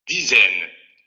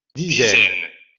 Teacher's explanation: No es complicado el fonema porque es como la S, solamente hay que generar esa sonoridad en el fonema. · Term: el sonoro